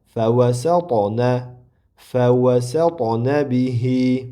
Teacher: Endi to harfi sukunlik bo'lganida bu ham qalqala sifati bor. Qalqalab qilib talaffuz qilinadi.